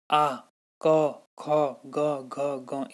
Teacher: कंठ से निकलने वाली जो वर्ण है वो है अ, आ, क वर्ग। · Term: कंठ्यवर्ण